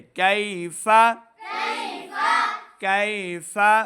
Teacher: ألم تروا کیف کیف کاف یا زبر کئی کو لمبا نہیں کریں گے کیونکہ یا ساکن سے پہلے زبر ہے تو یا لین ہے، لین کو ہم لمبا نہیں کرتے۔